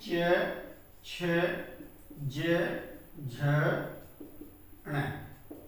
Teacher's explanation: तो देखिए च वर्ग का जो उच्चारण स्थान है वह है तालव्य। कि जब हम च वर्ग का उच्चारण करते हैं तो जीवा जो है तालव्य को स्पर्श करती है, इसलिए इन्हें तालव्य व्यंजन कहते हैं।